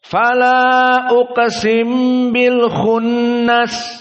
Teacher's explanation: Karena di sini yang menjadi idgham mim bertemu dengan ba dan makhrajnya sama sehingga uqsim tidak dibaca uqsimu tapi langsung ditasdidkan kepada ba.